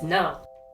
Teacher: When we say no angrily, we drop the pitch from high to low, just like we do when saying a word in Mandarin with the fourth tone.